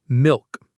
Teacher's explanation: The back of the tongue goes up for the L before the K sound